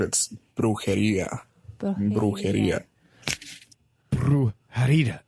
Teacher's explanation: the second syllable's got the emphasis, and it comes down and up again.